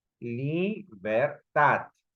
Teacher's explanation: cuando en este caso yo pronuncio la última sílaba, libertad, hay un mayor registro de voz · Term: sílaba tónica